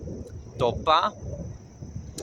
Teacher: somewhere between a T and A D